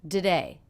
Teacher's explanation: we're reducing this unstressed syllable to be the schwa